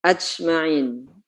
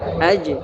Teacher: sifat huruf jimnya tidak tepat ya harusnya tidak boleh berdesis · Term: jahar tanpa berdesis